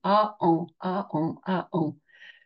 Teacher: le en se fait se prononce sur la base du a on commence par former un a et on le nazalise on le fait monter dans le nez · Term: voyelles nasales, le an